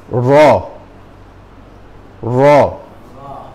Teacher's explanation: এই যে জিভ, জিবের উল্টা পাশ, জিবের আগার উল্টা পাশ, জিবের মাথার নিচের অংশ, জিবের একদম আগার নিচের অংশ উপরের তালুর সাথে লাগায় র। তার মানে কি জিভটা কিন্তু উল্টায় ফেলতে হচ্ছে, বুঝছেন কিনা?